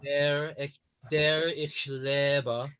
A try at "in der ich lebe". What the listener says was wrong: Lebe is also closed. Leben, the word leben, to live, is closed.